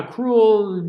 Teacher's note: it almost sounds like a one syllable word and often it is set as a one syllable word